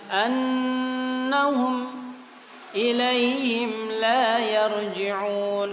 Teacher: annahum nun tasydid, juga ditekan boleh sepanjang-panjangnya. Ya, minimal 2 harokat.